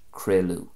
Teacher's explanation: very often the ADH transitions into a U sound in Ulster Irish